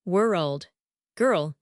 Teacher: The dark L creates that relaxed deep resonance native speakers have.